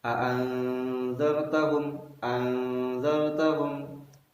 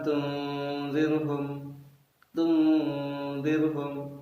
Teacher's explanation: menyamakan, dalam artian membaca suara nun mati secara samar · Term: ikhfa